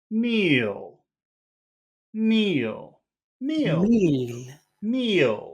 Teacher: that means we have to give this a high tone but it's only one syllable word so we're going to have to make that fall from high to low